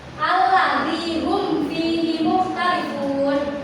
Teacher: di situ kan mimnya itu terdengar jelas ya, tidak disamarkan ke huruf setelahnya fa ataupun didengungkan seperti idgham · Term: izhar syafawi